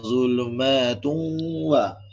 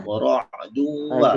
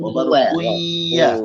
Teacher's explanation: Idgham kita baca memasukkan beserta dengung. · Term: Idgham al-Gundah